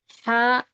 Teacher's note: یہ درمیانی حلق سے آواز، بڑی ہا کی آواز ہے وہ. ہا ہا یہ اندرونی ہے.